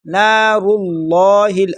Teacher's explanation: لفظ اللہ کو موٹا پڑھیں گے، را کو بھی موٹا کر کے پڑھیں گے